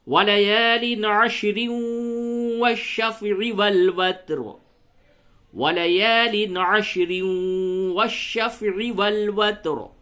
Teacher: جب عین کو آپ نے دیکھا تو عین کے اوپر فتحہ ہے تو را کو پر پڑھیں گے، اور حالت وصل میں یعنی ملانے کی حالت میں اس را کو اسی طریقے سے والفجر کی را کی طرح باریک پڑھیں گے